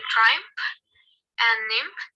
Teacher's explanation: For example, in triumph and nymph is rendered it's labiodental nasal instead of bilabial.